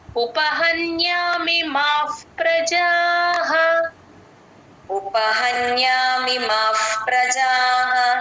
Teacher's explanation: మిమాఫ్ మిమ తర్వాత ఉన్న విసర్గ F F sound F లాగా పలుకుతాం ప ముందు విసర్గ ఎప్పుడు వచ్చినా ఎఫ్ లాగే పలుకుతాం